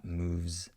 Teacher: Native speakers definitely hear this word, this final S, moves, right? We have a voiced S sound, a Z sound there.